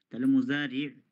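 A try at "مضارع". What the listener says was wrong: তাহলে আমরা তো মুদা বলবো, মুদা। মুজা বলবো কেন?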